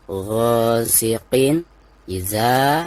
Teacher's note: Wa min syarri ghasiqin. Nah, ada tanwin, lalu di depannya adalah salah satu daripada huruf izhar. Nah, maka cara membaca tanwin di sini itu harus dijelaskan ya